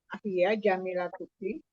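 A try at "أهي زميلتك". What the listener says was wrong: Zami, bukan ja, tapi za. Zami yalatuki.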